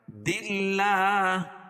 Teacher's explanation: اللہ کا لام باریک پڑھا جائے گا، کیوں؟ اس لیے کہ اللہ کے لام سے پہلے دال کے نیچے زیر ہے، یعنی زیر ہو تو باریک پڑھا جاتا ہے۔